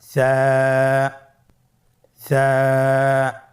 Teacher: সা হরফটি বারিক মানে পাতলা করে উচ্চারণ করতে হবে। · সা হরফটির মাখরাজ হলো উচ্চারণের স্থান জিহ্বার আগা সামনের উপরের দুই দাঁতের আগার সঙ্গে লাগিয়ে উচ্চারিত হয়